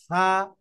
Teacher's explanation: জিহ্বার আগা উপরের দাতার আগের সাথে লাগে লেগে লেগে উচ্চারণ করতে হবে পাতলা করে বাতাস বাইর হবে